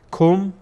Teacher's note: کاف از زبان در واقع قسمت اخیر زبان ادا میشه